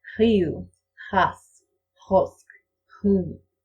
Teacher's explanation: When I try to make the voiceless rolled R, I usually make it a uvular trill.